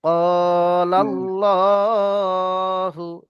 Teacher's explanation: যেহেতু খাড়া জবর আছে, খাড়া জবর আলিফ মাদ্দার সমান, তাই টান দিলাম